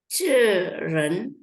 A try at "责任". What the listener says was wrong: Zeren. Oke, zeren. Ibu sudah bagus ya. Nadanya aja sedikit, tapi nggak apa-apa nanti dengar ulang rekaman ya.